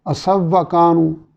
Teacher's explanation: واو ساکن کا واو میں ادغام ہو رہا ہے